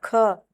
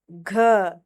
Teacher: महाप्राण में ज्यादा हवा निकलती है